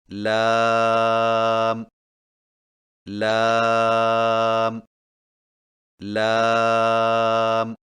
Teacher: لام کی ادائیگی میں زبان کے باریک کنارے کو اوپر والے دانتوں کے مسوڑوں سے لگا کر باریک آواز میں پڑھیں، یعنی لام لام لام۔